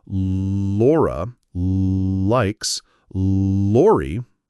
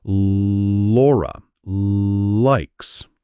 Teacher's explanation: This is called a light L at the beginning of syllables. The tip of your tongue makes firm contact with the lvear ridge.